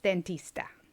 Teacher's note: this is not a very hard abrupt sound like d but it's more of a tap of the tongue